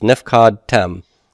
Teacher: I've got 3 closed syllables. The accent does go to the heavy ending at the back.